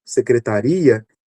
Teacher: secretaria a sílaba tônica aqui no final